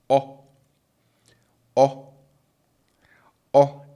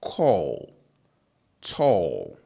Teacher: in Twi, it's a very short o sound. So it's like saying tall, but cutting it short in the middle.